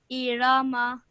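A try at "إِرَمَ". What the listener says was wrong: Just don't stretch the ra out for too long. Just 1 second each, okay? Irama.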